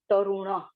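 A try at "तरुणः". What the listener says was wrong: Tarunaha. Don't drop the visarga.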